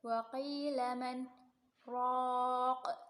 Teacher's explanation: Wa qi mad tabi'i sebab kasrah diikuti ya sukun. Man raq bacaan saktah berhenti sejenak sekedar satu alif tanpa bernapas. Raq ronya tafkhim.